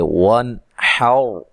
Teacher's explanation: یہاں نون ساکن کا اظہار ہے، غنہ نہیں کریں گے، وانحر نہیں کریں گے، وانحر، یہ بھی را موٹی ہوگی۔